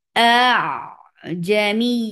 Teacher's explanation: اس میں مد نہیں کرنا بلکہ اس کو سہولہ کے ساتھ پڑھ دینا ہے، اس کو آسانی کے ساتھ اور نرمی کے ساتھ پڑھ دینا ہے۔ اس کو اس کے بیچ میں اس حمزہ میں قطعی میں شدت لے کے آئیے۔ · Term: حمزۃ المسہلہ